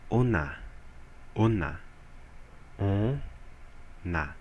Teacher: esse n ele não tá sendo pronunciado aqui ele torna esse o uma nasal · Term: lizon